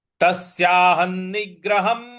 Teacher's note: निग, यहां पर ग पर हमको आघात देना है, निग्रहम। ह के ऊपर जो अनुस्वार है उसका उच्चारण हमें म ले आना है।